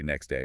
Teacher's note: So we just drop the T and say next day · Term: elision